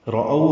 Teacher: او وولین ہے، ہونٹوں کو گول کریں گے، آگے کی جانب لائیں گے، لمبا زیادہ نہیں کر سکتے، 1.5 حرکت لمبا کرتے ہیں.